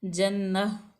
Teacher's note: नून मुशद्दद है, यहाँ पे थोड़ी देर रुकेंगे।